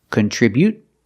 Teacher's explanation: you can use a stop T, contribute, and just stop the air without releasing the T, or you can release the T.